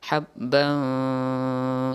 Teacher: Kemudian habban, ini ada baris dua atau tanwin bertemu dengan fa. Nah, ini samar lagi disertai dengan berdengung.